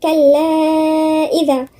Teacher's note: الذال هنا من الحروف اللثوية